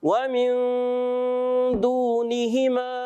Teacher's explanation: نون ساکن کے قاعدوں میں سے ہوتا ہے تو یہ نون کو چھپا کر ہم ادا کرتے ہیں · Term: اخفا